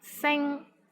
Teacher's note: Sing, which means star, S-I-N-G-1. Here the initial sound is S, and final sound is ing, I-N-G. And the syllable is in the first tone.